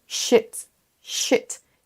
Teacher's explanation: Si vous faites un i court, vous dites en fait shit